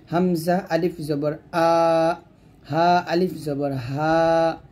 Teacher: তারপর সর্বশেষ 6টি হরফ আমরা গলা থেকে উচ্চারণ করব, হামজা এবং হা গলা শুরু থেকে উচ্চারণ হবে · হামজা এবং হা গলার শুরু থেকে উচ্চারণ হবে